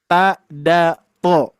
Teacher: ta dal dan tho ini pun juga sama ayah bunda ya sama posisinya di antara gusi gigi seri atas